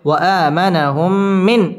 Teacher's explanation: মিম সাকিনের বামে মিম আসছে ইদগামে মিসলাইন গুন্না সহ মিলিয়ে পড়তে হবে